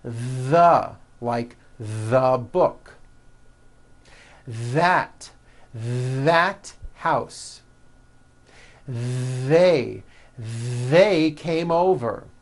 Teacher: That's the voiced TH. You should be able to feel a strong vibration in your throat and on your tongue.